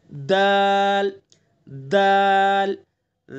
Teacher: دال کا مخرج وہی ہے جو تا کا ہے، زبان کی نوک اور ثنا علیہ کی جڑ